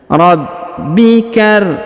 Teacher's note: Huruf ba perhatikan ditahan dan ditekan karena terdapat tanda tasdid atau penekanan